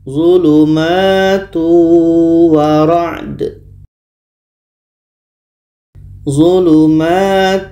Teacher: Tanwin bertemu wa, hukumnya adalah idgham bi gunnah. Maka bunyi tanwin masuk kepada wa dan ada dengungnya.